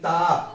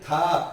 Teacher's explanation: था बोलेंगे तो जीभ कहां पे जाएगी? दांतों पे लगेगी।